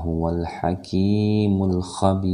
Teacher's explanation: ini adalah alif lam qamariyah, jelas, tidak boleh didengungkan